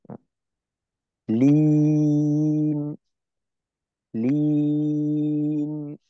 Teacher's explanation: এক আলিফ যতটুক টানি এর অর্ধেক পরিমাণ সময় নুনে দিতে হবে, প্রত্যেকটা জজমে তাসদিদে দিতে হবে।